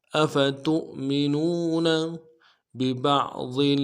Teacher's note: با کو نرم سے ادا کرنا ہے، اگلے با کو عین کے ساتھ ملانا ہے ، عین کو موٹا کریں گے، ضاد کو موٹا کریں گے،